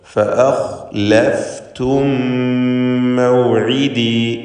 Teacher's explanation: ഫഅഖ് എന്ന് തടിപ്പിച്ച് സ്വരഭാരത്തോടെ ഖാ ഉച്ചരിക്കുക. തൊണ്ടയുടെ മേലേയറ്റമാണ്.